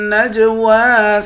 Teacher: جیم پر قلقلہ کریں گے، واو کے اوپر کھڑا زبر ہے، ایک الف کے برابر کھینچ کر پڑھتے ہیں۔